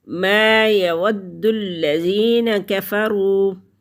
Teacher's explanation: ما ناک میں آواز لے کے نہیں جانی۔ یود الذین، دال مشدد ہے، پیچھے بھی واو کے ساتھ ملے گا اور لام کے ساتھ بھی ملے گا۔